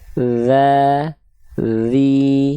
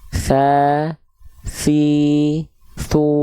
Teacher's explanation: Za, mengalir suara saja. Kalau tha nafas dan suara mengalir.